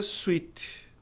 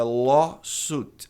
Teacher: Esse U-I tem som de U apenas.